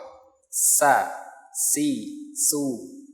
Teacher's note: Perhatikan bahwa sin dan sod itu sebenarnya satu makhraj, bahwa dia ujung lidah bertemu dengan belakang seri bawah, sa, si, su, sebagaimana tersebut. · sifatnya dia istifal, artinya lidah dia mendatar atau posisi rileks